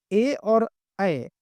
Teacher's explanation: ए और अ आपके कंठ तालव्य होते हैं।